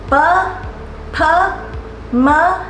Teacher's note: the first four consonants all involve your lips touching to make the sounds